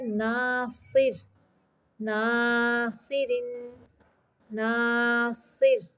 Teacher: یہاں پہ را باریک پڑھیں گے